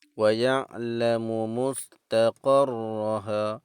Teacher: huruf ra tu sabdu yang berbaris fathah, juga dibaca dengan tebal.